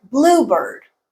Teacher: see that is blue okay a bluebird as in a species that is a compound word and the stress is on the first part